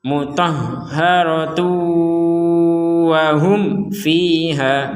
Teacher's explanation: huruf ta-nya di sini tanwin bertemu wawu, maka kita mendengungkan seperti di awal tadi ya.